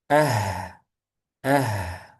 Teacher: Kalau H itu lemah, itu hamas. Udaranya berhembus atau udaranya mengalir. Ah, ah. Jangan dikuat-kuatin.